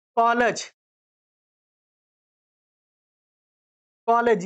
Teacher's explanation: आ और ओ के बीच की ध्वनि